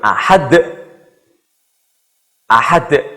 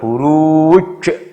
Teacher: Ini huruf D. Di akhir ayat. Bacanya mantul. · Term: qalqalah